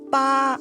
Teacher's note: the first is high and level